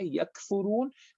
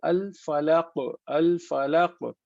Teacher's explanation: یہ قاف اور کاف دونوں وہاں سے نکلتے ہیں. تو ہم ایک قاف جو موٹا والا ہے وہ تھوڑا اور پیچھے سے نکلتا ہے، حلق کی طرف سے، گلے کی طرف سے. جو باریک والا کاف ہے وہ تھوڑا سا اس طرف سے نکلتا ہے جو منہ سے قریب ہو جاتا ہے.